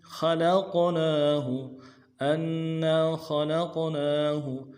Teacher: لق خلق نون کے بعد الف، نون کے اوپر الف مدہ ہے، کھڑا زبر ہے، ایک الف دار میں کھینچیں گے